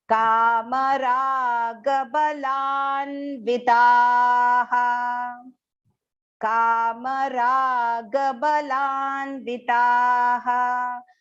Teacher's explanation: Ka long, ma short, ra long, ga short. Again, ba is short and la is long. And there is aghat on la to take the partial na that is joined to small v.